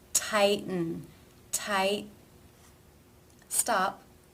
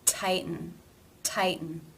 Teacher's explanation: the tongue does not change position between the T and the N sound.